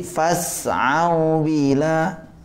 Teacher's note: Waw memanjangkan doma, bukan memanjangkan fathah. Jadi ini namanya bacaan lin.